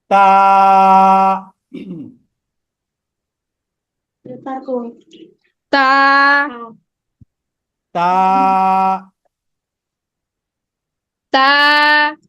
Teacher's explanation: এই হলো জিহ্বাটা। এই জিহ্বার অগ্রভাগটা উপরের দাঁতের গোড়ার সাথে লাগবে। ঠিক আছে? উপরে যে 2টা দাঁত আছে, এই 2টা দাঁতের গোড়াতে লাগবে।